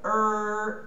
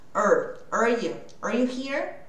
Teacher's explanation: Esse are vai ter só o som do R, que é er, a língua dobra lá no céu da boca.